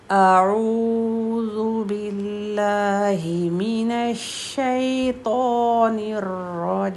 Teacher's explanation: پہلے حمزہ ہے ایک حرکت کے ساتھ، پھر عین کی 2 حرکت